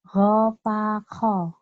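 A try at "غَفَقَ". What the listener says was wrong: O-nya jangan dikasih bilangin. Jangan ada hanya. Ko. Gofako.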